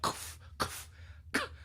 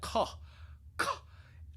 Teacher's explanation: It's almost like we're opening our mouths. The back of the tongue is hitting the back of the palate.